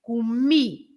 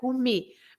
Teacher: And you stress the last syllable.